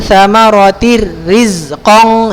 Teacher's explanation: ini tanwin berjumpa dengan huruf ro maka dia idgham bilagunnah ya jadi langsung